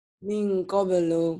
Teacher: Karena nun mati ketemu qaf, maka ikhfanya harus eng banget. Ini yang dikatakan ikhfa yang abad, yang jauh. · Jauh, n-nya harus jadi eng.